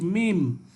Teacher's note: মিম একেবারে ঠোঁট থেকে উচ্চারিত হচ্ছে মিম